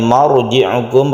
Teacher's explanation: marji'ukum, roknya ditebalkan, tafkhim namanya.